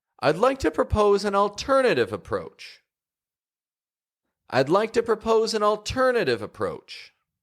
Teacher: to propose an alternative approach the word alternative is peeking up it's taking on the intonation it's rising in pitch and then approach goes back down · I'm emphasizing the word alternative to bring attention to the fact that there's something new being offered here